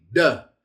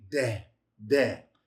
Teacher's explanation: Without the dot, soft D, deh, deh. It's like putting an H after the initial consonant sound.